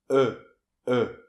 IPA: ə